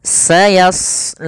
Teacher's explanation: Di sini pada lafal shad tebal, karena huruf shad salah satu sifatnya adalah isti'la, yaitu pangkal lidah terangkat.